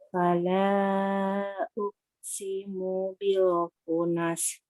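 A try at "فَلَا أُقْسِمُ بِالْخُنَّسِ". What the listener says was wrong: Itu ada nun tasdid. Ada nun tasdid kan?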